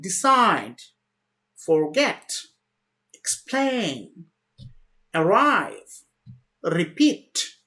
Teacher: if the verb comes with two syllables, the stresses are normally at the second part or the last part.